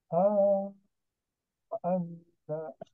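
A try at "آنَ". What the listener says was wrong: Jangan ana Pak, tapi ana, a-nya panjang. A.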